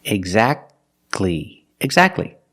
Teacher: don't pronounce a T exactly you go from the C Sound to the L Sound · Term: silent